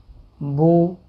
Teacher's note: پیش کو تقریباً آدھا سیکنڈ ایک حرکت کی مقدار کے برابر کھینچ کر پڑھنا ہے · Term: پیش کی مقدار